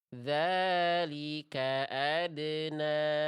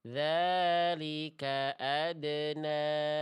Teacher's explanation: Jadi kita bacanya empat atau lima harakat ya. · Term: Mad jaiz munfasil